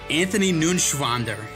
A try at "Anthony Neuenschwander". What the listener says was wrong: You didn't pronounce it right. It's N-E-U-E-N. It's Neuenschwander. Anthony Neuenschwander.